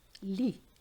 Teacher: Have you noticed the Z and the T were not pronounced?